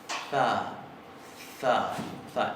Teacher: Entonces, se va a pronunciar za, interdental, sorda, fricativa. Za, es como una Z suave y lo utilizan muchísimo.